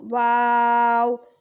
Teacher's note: واو کو ہم ہونٹوں کی ناتمام گولائی سے پڑھتے ہیں، یعنی پوری طرح بھی گول نہیں ہوتے ہونٹ اور جو ہے ادھورے گول، واو۔